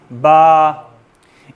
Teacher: ये जो आपकी दोनों होंठ मिलने की जगह है, ये क्या है, ये बा के निकलने की जगह है, बा का मखरज है, यहाँ से इसको उठाएंगे तो क्या बनेगा, बा।